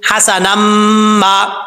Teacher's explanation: اور اگر اس کو ملا کے پڑھیں گے یا وقف نہیں کریں گے تو نون کو میم کے ساتھ ملائیں گے. حسنما، میم کے آگے الف ہے، ایک الف کی مقدار لمبا کیا جائے گا. وقف کریں گے تو حسنا.